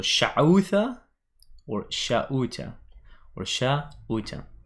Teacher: So some people don't pronounce the ain, as you can hear.